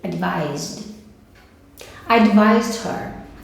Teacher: que não tem som de S no advise, tem som de Z